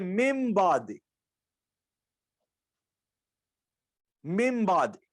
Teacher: इकलाब उसका माना यह होता है कि बाज औकात ऐसा है कि ये नून आता है मिन, اور اس کے بعد آگے جو لفظ ہوتا ہے اس میں آ جاتا ہے با، یعنی نون کے بعد آگے با آتی ہے، با. تو قاعدہ یہ ہوتا ہے کہ پھر نون کو میم سے بدل کر پڑھتے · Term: اقلاب